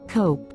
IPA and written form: koʊp (Cope)